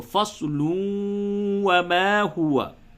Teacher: فصل نہیں ہوگا بلکہ فصلوں، ادغام مع الغنہ